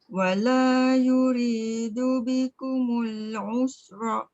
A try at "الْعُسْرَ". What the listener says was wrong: Tapi jangan bunyikan ra pada atas tu. Mati.